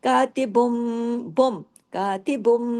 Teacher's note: बा दो पेश बुम हो जाएगा। मीम की आवाज हो जाएगी। किस वजह से? अगले हर्फ में बा आ गया। कातिबुम और गुना भी होगा।